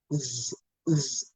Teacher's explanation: S sounds like it is normally, but then it sounds z, z when the vowel follows it